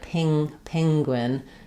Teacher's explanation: the front vowels are in the presence of a nasal sound like an n or an ng, they're going to get a little bit raised. So it's going to sound a little bit like penguin.